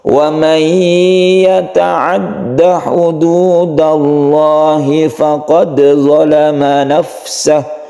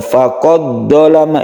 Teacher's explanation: faqad ini kita pantulkan juga ya jadi meskipun ini Akhir kata tapi dia di tengah-tengah ayat ini tetap disebut qalqala Sugra jadi ini tidak diidramkan ya bukan faqad doama itu salah yang